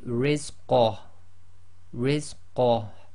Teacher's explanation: Okay, but if you're stopping, again the ha goes sakin, so this will simply be rizqah, rizqah, and again you've got to bring a tiny bit of the ha from the bottom of your throat